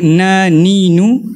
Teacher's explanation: akan ada rasa gunnah sikit dekat hidung ni. Akan ada rasa getaran dekat hidung tu. Dan itulah gunnah.